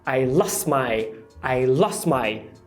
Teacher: É muito comum o T, né, o sofrer um apagamento total quando ele está entre duas consoantes. Então, você tem o S do lost, e aí você tem a outra palavra começando ali, que é o my.